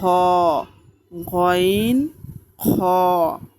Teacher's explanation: হলকের শেষ হইতে উচ্চারিত হয় গইন খ